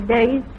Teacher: I'm interested to notice that she does pronounce the diphthongs fully, days.